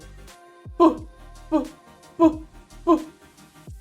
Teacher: звук п приголосний ми його не співаємо глухий тому що не працює наше горло